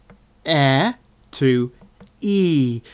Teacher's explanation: the mouth is more closed up with the corners of the lips sort of peeling back a little and that can create an e type sound